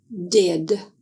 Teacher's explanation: To make the sound of the letter D, D, air is blocked by the tip of the tongue touching the ridge behind the teeth. D is a voiced sound, and the key word is did.